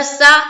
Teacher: سین کے اوپر زبر کی حرکت ہے، زبر کو جلدی پڑھیں، تھوڑا بھی نہ کھینچے